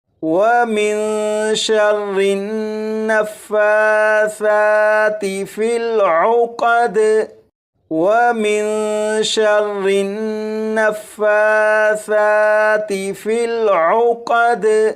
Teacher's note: یہاں پر فا اور ثا کے اوپر کھڑا زبر ہے، ان دونوں حروف کو ایک ایک الف کے برابر کھینچ کر پڑھیں گے